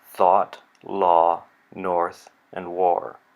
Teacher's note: It's a little difficult to recognize this as the same vowel when it's followed by an R. The R coloring really changes our perception of it.